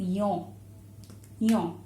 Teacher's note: Yaw, right? There is nasalization a little bit. So you can see that it has a slight O ending.